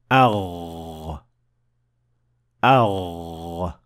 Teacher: You should definitely feel some vibration on your throat. So the root of the tongue is raised to the point of almost connecting to the farthest area of the soft palate, producing the Ghain.